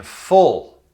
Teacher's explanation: With the dark L sound, there's a little vowel sound that happens right before the L. It's kind of like the sound in full, like a full stomach.